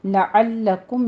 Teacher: لعلکم میں عین وسط حلق سے ادا کریں گے